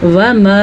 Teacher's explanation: اس کو آسان الفاظ میں 4 سیکنڈ تک اس کو لمبا کرنا ہے